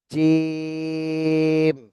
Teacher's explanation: এই তিনটা একই জায়গা থেকে উচ্চারণ হবে এরপরে দেখেন জিম এটা জিভার মাঝখান উপরে তালুর সঙ্গে লাগায় উচ্চারণ করতে হবে